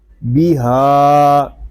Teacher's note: ہا کو ایک الف تک کھینچ کر پڑھیں گے کیونکہ ہا کے اوپر کھڑا زبر آ گیا ہے